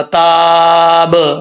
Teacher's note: وقف کریں تو با ساکن ہو جائے گا، با میں قلقلہ ہوگا